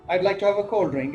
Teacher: it's a falling tone because I'm making a sort of statement